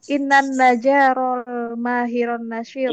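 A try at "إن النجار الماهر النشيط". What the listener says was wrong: innan najja, jimi tasydid, naj,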